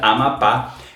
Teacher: a gente percebe que a sílaba mais forte é a última, ou seja, Amapá É uma oxítona.